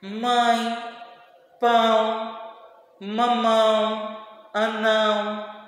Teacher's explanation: a gente percebe esse vibrado nosso nariz porque o som e sai pela boca e outra parte é pelo nariz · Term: nasal